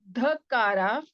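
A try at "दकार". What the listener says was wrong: Not no mahaprana. No mahaprana. Dakara. It's not dhakara. It is dakara.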